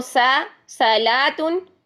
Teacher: اسی طرح اگر آپ صاد میں استعلاء اور اطباق کی کوالٹی نہیں لاتے ہیں تو ان کے اپوزٹ کوالٹیز آ جائیں گی، استفال آ جائے گی اور اسی طرح انفتاح آ جائے گی، تو وہ سین بن جائے گا، کیونکہ سین میں استفال اور انفتاح ہے، سین باریک حرف ہے